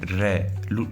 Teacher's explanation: र का उच्चारण करोगे तो जीभ क्या आगे कंपन करेगी, ऊपर से नीचे अवयव को छुएगी, यानी मुख्य भाग को छुएगी। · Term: लुंठित वर्ण